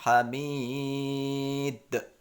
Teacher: huruf ya di sini yang terakhir ini kita bisa baca panjang 5 harokat karena dia terakhir